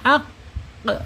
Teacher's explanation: dia mempunyai sifat isti'la terangkat ya, terangkat lidahnya